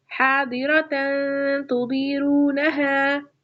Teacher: یہاں پر میں نے اخفاء کیا ہے، یعنی تن کی آواز یعنی تنوین کی آواز اور نون ساکین کی آواز کو ناک میں تھوڑی دیر رکھا ہے